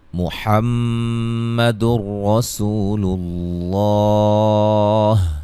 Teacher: محمد رسول اللہ، میم مشدد پہ غنہ ہے، یہاں نون تنوین کا ادغام بلا غنہ ہوگا، غنہ نہیں کریں گے، را کو موٹا ادا کریں گے، واو مدہ ہے، لفظ اللہ کے لام کو موٹا ادا کریں گے۔